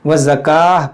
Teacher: یہاں پر رکیں گے تو گول تا کو ہا ساکنہ سے بدل دیں گے. وزکاہ پڑھیں گے.